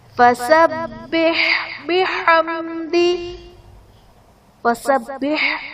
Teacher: فسبح با حرف قلقلہ مشدد ہے، یہاں پر خوب جماؤ کے ساتھ پڑھیں گے